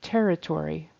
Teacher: syllable stress on the first syllable